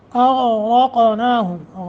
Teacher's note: غین را قاف تینوں تفخیم کے ساتھ